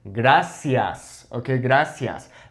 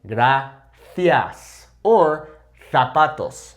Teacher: That Z has an S sound